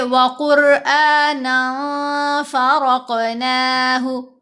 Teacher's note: نون دو زبر نن میں جو تنوین کی نون ہے اس کو ہم نے ناک میں چھپانا ہے، کیونکہ آگے فا آ رہا ہے، فا حروف اخفا میں سے ہے، تو ہم پڑھیں گے وَقُرْآنًا فَرَقْنَاهُ، را کو موٹا بھی پڑھنا ہے اور کاف پر قلقلہ بھی کرنا ہے، فرق۔